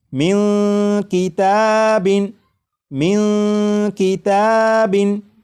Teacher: آ چکا ہے، لہٰذا اس نون ساکن میں اخفا ہوگا، یعنی اس نون ساکن کی آواز کو ناک میں چھپا کر غنہ کر کے پڑھیں گے